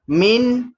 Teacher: huruf mim yang berbaris bawah kena baca senyumkan mulut kita dan matikan huruf nun dengan jelas.